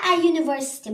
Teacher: burada bu başlandığı hərf U sait olsa da, burada tələffüz zamanı Y kimi tələffüz olunur. Ona görə də biz burada ə istifadə edirik.